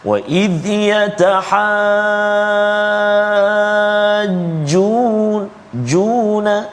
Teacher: bertemu huruf mad dengan huruf yang bersabdu, kan, ataupun dengan tanda sabdu. Maka panjang dia 6 harakat tanpa diskaun, no discount, 6 harakat. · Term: mad lazim kalimi muthaqqal